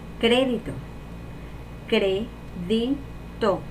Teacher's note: La sílaba tónica sería cre y sería esdrújula.